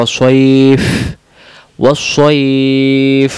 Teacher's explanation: আমরা অনেকে বলি ওয়াসসাইব। ওয়াসসাইব বললে ভুল হবে, শেষে ফা আছে, মুখ দিয়ে বাতাস বেরবে